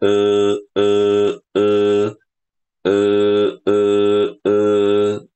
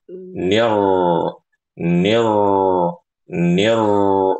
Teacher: ketika kita baca E itu pangkal lidah kita naik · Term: huruf ro tebal